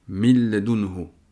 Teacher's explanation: Ici on voit que min termine avec un nun avec une soukoun et que le mot qui suit commence par un lem qui fait partie des huruf des lettres de l'idram biri el runna. Donc ici le nun n'est pas prononcé ni même sa caractéristique qui est la runna.